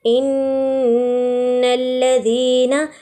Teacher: نون پہ غنہ کیجئے، لام باریکی سے ادا کیجئے